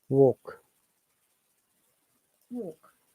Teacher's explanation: the WA sound is always pronounced as wo, not wa